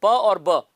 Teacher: तो जो दोनों होठों के कोऑर्डिनेशन से जो साउंड प्रोड्यूस होता है उसको बायलेबियल साउंड कहते हैं। तो प और ब ये बायलेबियल प्लोजिव्स हैं · जब आप प बोलते हो ना तो दोनों होंठ आपके मिलते हैं, है ना। मुंह को आप बंद कर देते हो और फिर एकदम से खोलते हो